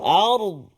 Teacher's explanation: Bagus, fokus kita pada kalimah ardu. Ra sukun, ra mati sebelum dia hamzah ataupun alif baris atas, maka ra bunyi tafkhim.